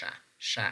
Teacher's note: this is voiceless means that when we producing this sound we perceive less vibration